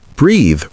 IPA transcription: briːð